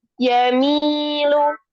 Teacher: Yadiaku Doyakin Yamilu Mi-nya panjang. Yamilu Lu jangan pakai hamzah.